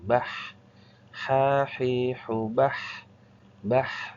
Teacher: Nah, bah ini ada angin yang keluar namanya hames. Kalau bah ada juga sisa suaranya bah.